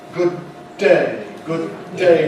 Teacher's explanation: We make a single long D · We run the two D sounds together. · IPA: [ˈgʊd̚ (unreleased) ˈdeɪ]